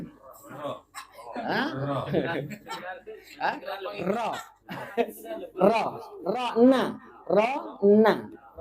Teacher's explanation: ujung lidah disentuhkan di bagian gusi tapi agak ke belakang lagi